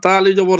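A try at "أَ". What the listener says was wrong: না এটা হামজা এটা ধরতে হামজাই বলতে হবে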